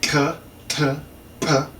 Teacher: And the ejective voiceless stops would be k, t, p.